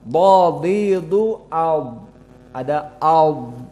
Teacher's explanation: Tapi kalau dhad tidak ada nafas yang keluar namun suara tetap sedikit panjang. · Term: rohawah